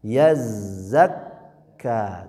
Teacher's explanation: Yazakka, huruf zai dengan kaf bertasydid. Bedanya zai mengalir suaranya, kaf tertahan. Yazakka, tuh ya, menekan kalau kaf.